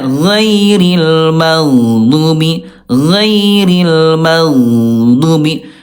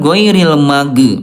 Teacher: huruf ghain dari segi suara ayah bunda dia rokhawah, dia lemah mengalir